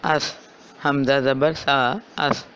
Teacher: نرمی سے پڑھنا ہے، سیٹی کی آواز کو ختم کرنا ہے۔ اور زبان کی نوک جب اوپر والے دانتوں کے کنارے سے لگ رہی ہے تو سا کی ادائیگی ہو رہی ہے